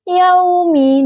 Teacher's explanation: Kata yaumi huruf ya makhrajnya itu di tengah lidah dan langit-langit mulut. Huruf wau yang makhrajnya itu di bibir yang menutup rapat.